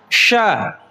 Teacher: sya itu adalah satu huruf yang posisi makhrajnya ada di tengah-tengah lidah Bu, wastul lisan. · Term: huruf sya